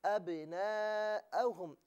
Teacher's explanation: बा को इस तरीके से अदा किया जा रहा है कि ऐसा मालूम होता है कि आवाज़ लौट रही है। अब इसे इस तरीके से पढ़ना चाहिए, इसे बग़ैर जुम्बिश के अब पढ़ना गलत है। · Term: कलकला